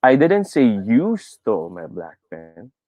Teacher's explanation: i put my emphasis on you